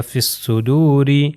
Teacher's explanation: یہ یا کا تلفظ نہیں، الف اور لام کا تلفظ نہیں، تو یہ جو ہے فے جو ہے جا کے صاد سے مل جائے گا، اور یہ ہو جائے گا فِي الصُّدُورِ.